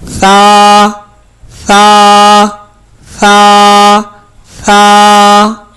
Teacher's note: ثا کو ہم 1 الف یعنی 2 حرکات کے برابر، جو تقریباً 1 سیکنڈ کی مقدار ہوتی ہے، اتنی دیر تک اس کو ہم لمبا کر کے پڑھیں گے۔